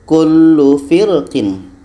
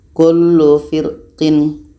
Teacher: Contoh tebalnya, kullu firqin. Pangkal lidah terangkat. Sedangkan kalau dibaca tipis, pangkal lidah tidak terangkat. Kullu firqin, dibaca tipis saja.